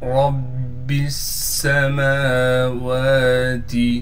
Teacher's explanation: رب السماوات، را کو با سے ملائیں گے اس لیے کہ با پر تشدید ہے، تشدید ہونے کی وجہ سے تھوڑا ٹھہراؤ کر کے پڑھیں گے۔ را کو موٹا کر کے پڑھنا ہے اس لیے کہ را پر زبر ہے